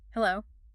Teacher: That sounds a little tired, a little flat.